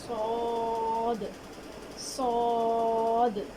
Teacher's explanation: صاد کو اس کے مخرج یعنی زبان کی نوک جب نیچے کے 2 دانتوں کے جڑ سے لگے تو صاد ادا ہوتا ہے. تو صاد کو اس کے مخرج سے ادا کرتے ہوئے زبان کے آخری حصے کو اوپر کی جانب اٹھائیں گے تو صاد صحیح ادا ہوگا.